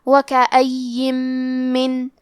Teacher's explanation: آخری میں نون ساکن ہے، پھر حرف المیم ہے کلمت من، یہاں حکم ہے ادغام بغنہ، تو ہم یہ حکم کو غنہ اور تشدید کے ساتھ ادا کریں گے